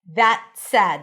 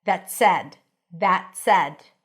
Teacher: Make sure you stick the tongue out. And then the T is a held T that connects to an S. That said. So you don't really hear the T.